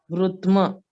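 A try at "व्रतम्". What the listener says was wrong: No, there is no halant or anything, right? It is a complete letter. Vra, ta, and m. Vratam.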